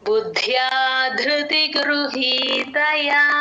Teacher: బుద్ధి ద కింద ద ఒత్తు మహాప్రాణం అలాగే య ఒత్తు అన్నీ వినపడేటట్టు చెప్పాలి